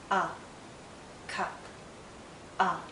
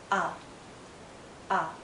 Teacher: a a as in cup a cup a it's a very short sound and also a very relaxed sound a a if you were to hold this sound out it